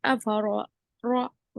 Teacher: रॉ पर जबर है तो रॉ को मोटा पढ़ेंगे